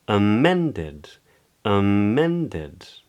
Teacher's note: So in a word like ahead, head is the stressed syllable, and the A at the beginning is unstressed. In amended, men is the stressed syllable, and the A at the beginning and the D-E-D at the end are unstressed.